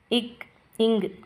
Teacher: 2 மெய்களும் நாக்குடைய முதல் பகுதி அன்னத்துடைய அடிப்பகுதியை பொருந்ததால் பிறக்கிறது